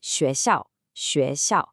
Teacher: It is not the English sh sound. It's much softer, it's a higher pitch sound. To get it right, try resting the tip of your tongue just behind your bottom teeth and then pushing the air through. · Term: x sound